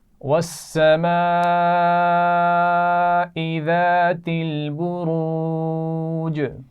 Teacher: والسماء بڑی مد ہے تو خوب کھینچ کر پڑھیں گے